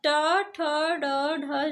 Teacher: ट, ठ, ड, ढ जो है ये आपका मूर्धा से उच्चारित होता है। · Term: मूर्धन व्यंजन